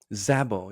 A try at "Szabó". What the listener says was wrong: Szabó. It's Szabó. Yeah, the Z is silent, actually. It's not. It's not silenced. little small Hungarian lesson, but there are 46 letters in the Hungarian alphabet, and each is a very specific sound.